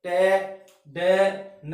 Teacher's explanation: टे, डे, न आप बोलोगे तो आपकी जीभ है, दांतों से जस्ट पीछे वाला पार्ट होता है, ये कठोर जिसको हम मूर्धा कह देते हैं, वहां जीभ टकराएगी तब ये ध्वनियां बोली जाती है। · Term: एल्वियोलर